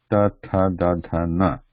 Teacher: This is a straight tip of the tongue, straight, and is pressing against back of the front teeth.